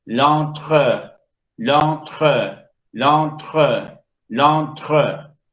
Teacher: El fenómeno es a. La E abre un grado, no es en, es a. Y luego nasaliza.